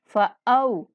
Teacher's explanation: یہاں پہ واو لین ہے، او کی آواز آنی ہے ، او نہیں پڑھنا، یعنی کہ